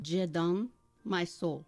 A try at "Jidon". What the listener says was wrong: Don't try to say it with an accent. Just Jidon. you are. trying to sound... Jidon.